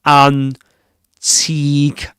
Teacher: in the word antique you get at the beginning the vowel sound a antique and then you get the e the long E sound as in medium.